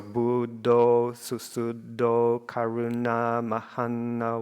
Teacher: then the whole is long because of the O and then you've got two short syllables kuru and then na is long because of the long egg the a with the bar over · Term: long syllable